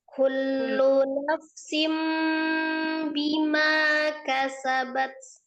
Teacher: Iklamnya, rubah nun sukunnya jadi mim. Nafsim, ya rapatkan kedua bibirnya. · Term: iqlabnya